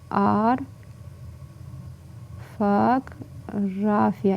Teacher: İlk 2 O'lar A kimi tələffüz olunur. Digər A'larda olduğu kimi qalar.